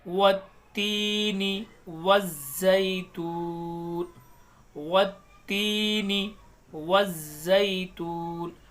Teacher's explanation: वत्तीन में भी अलिफ लाम को नहीं पढ़ा क्योंकि ये हरूफ शमशी में से है। जब भी हरूफ शमशी के पहले अलिफ लाम आता है तो वो कभी नहीं पढ़ा जाता, इस चीज़ को याद रखें।